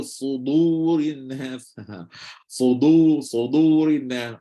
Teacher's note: Jadi kena kawal dia supaya walaupun dia duduk selepas huruf tebal, tetapi dal tak berubah, tetap jadi dal. Tak ada tiba-tiba dal tukar jadi dot dan sebagainya.